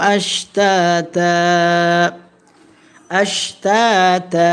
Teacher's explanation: এখানে দুই জবরে তানবিনে ওয়াকফা হয়েছে, এক জবর ফেলে আরেক জবর রেখে এক আলিফ টেনে পড়েছি, এটার নাম হচ্ছে মাদ্দে ইওয়াজ।